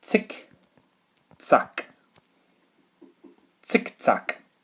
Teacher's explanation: the pronunciation of the Z in German is a TS sound, as if you're letting air out of a tire.